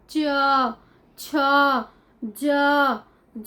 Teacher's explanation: च वर्ग जो है हमारा यहां तालू से बोला जाता है तालू हम किसको कहते हैं दांत के बिल्कुल पीछे का से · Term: तालव्य